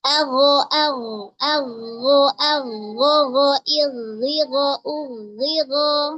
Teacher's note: Jadi ketika ghain atau kha yang berharokat kasrah dia tetap tebal ya.